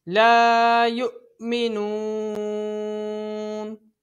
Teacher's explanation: حمزہ ساکن اس کو ہمیشہ جھٹکا دے کے پڑھا جاتا ہے